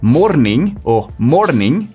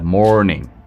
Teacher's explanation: Y las R's se producen desde la garganta. Entonces no decimos morning o morning como en español, sino morning desde la garganta, morning.